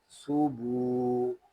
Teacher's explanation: تا پیش سو، با واو پیش بو، صوبو۔ یہاں پیش کو ہونٹوں کی گلائی سے ادا کریں گے، آگے واو آ رہا ہے، یہاں بھی ہونٹوں کو گول کریں گے، اس کو پڑھیں گے صوبو۔